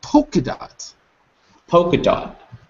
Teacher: But I we always say poker when we're speaking fast for some reason. Oh, so you omit the L. Yeah, you don't really say the L.